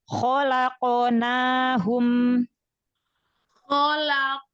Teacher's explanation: Angkat lagi pangkal lidah. Makhraj huruf qaf itu dari pangkal lidah bagian atas ketemu langit-langit lembek. Pangkal lidah terangkat karena huruf qaf huruf isti'la.